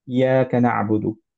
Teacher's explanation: ইয়া বললে একটা ইয়া কিন্তু বাদ চলে গেল, কারণ এটা দুইটা ইয়া আছে এখানে।